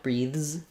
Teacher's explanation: When we're doing something like breathes, the S letter is voiced, so it's a Z sound, breathes. And so there you just, again, same tongue position, you're just keeping your voice on as you transition.